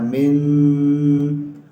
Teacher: نون ساکن کے بعد شین، یہاں تھوڑا سا غنہ کرنا ہے